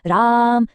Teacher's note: प्लुत स्वर का इस्तेमाल तब होता है जब किसी को दूर से पुकारते हैं, जैसे राम, जहां हम आवाज को खींचते हैं।